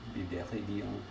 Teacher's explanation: Oh man, it'd be so cool if Bibleridian was pronounced with a nasal vowel at the end